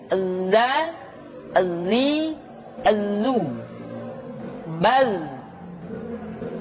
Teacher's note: ketika kita mengucapkan huruf za, suara kita mengalir, akan tetapi nafas tidak boleh mengalir.